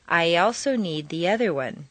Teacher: After a long E sound, your lips will be pulled back far enough to create a Y glide or liaison.